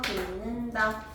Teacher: 공식을 써보면 디귿이 니은을 만났을 때 니은으로 바뀌는 현상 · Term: 비음화